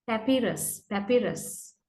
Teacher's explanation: Strong syllable is the one in the middle actually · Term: primary stress